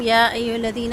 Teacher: یا پہ مد جائز منفصل ہے، 4 حرکت مد کو لمبا کریں گے